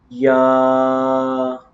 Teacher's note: یہ جوف دہن یعنی منہ کا خلا، یہ منہ کا جو اندر خلا ہے نا یہ وہاں سے ادا ہوگا